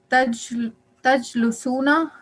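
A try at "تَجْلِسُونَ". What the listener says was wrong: Tajlisuna. Lam has a kasra.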